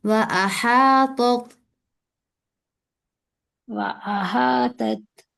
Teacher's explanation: احاطت میں ہا کے ساتھ کھڑا زبر ہے، اسے پڑھنا ہے ایک الف کے برابر